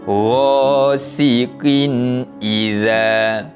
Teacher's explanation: bunyi bacaan tanwin itu tadi kita bacakan dengan bacaan yang jelas tanpa dengung. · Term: izhar kholqi